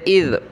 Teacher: حمزہ کو ذال کے ساتھ ملائیں گے، ذال پر زبان نکالیں، حمزہ ذال زیر اذ۔